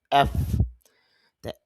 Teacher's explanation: এফ উচ্চারণ হয় নিচের ঠোঁটের পেট উপরের দাঁতের আগার সঙ্গে লাগিয়ে